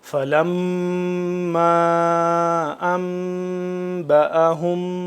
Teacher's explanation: لمبا کر رہے ہیں اوپر مد کی وجہ سے، اور غنہ جو ہو رہا ہے وہ نون میم مشدد کی وجہ سے غنہ ہو رہا ہے